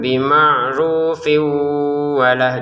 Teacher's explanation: Kalau disambungkan baca dua harakat dengan syarat ini juga tanwinnya ketemu wau kita masukin ke wau disertai dengungan